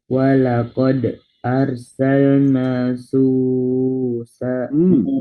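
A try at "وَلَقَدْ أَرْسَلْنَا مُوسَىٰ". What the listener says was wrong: Terbalik. Bukan su, tapi mu.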